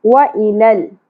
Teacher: لام ساکن پہ موسٹلی لوگ قلقلہ کر جاتے ہیں, یہاں قلقلہ نہیں ہے